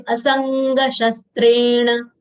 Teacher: Na is retroflex, na full letter, short sound